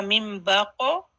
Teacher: यहाँ क़ाफ साकिन है, कलकला है, क़ाफ हैवी